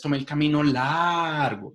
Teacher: ustedes extienden la duración de la palabra largo para mostrar justamente eso que el camino es bastante largo